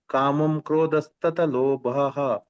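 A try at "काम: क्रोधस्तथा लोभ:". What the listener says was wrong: ಅಲ್ಲಿ ಕಾಮಂ ಅಲ್ಲ ಕಾಮಹ ಅಂತ ಇರುವಂತದ್ದು ಕಾಮ ಕ್ರೋದಸ್ತ ಲೋಭಹ ಅಂತ ಓದಬೇಕು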